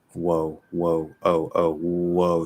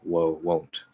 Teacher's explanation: so uh it's just an o whoa whoa oh oh whoa so you start on the w and you go to oh